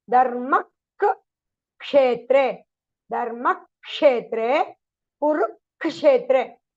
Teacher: So the first half of the Ksha will be doubled.